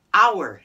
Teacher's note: but the h is silent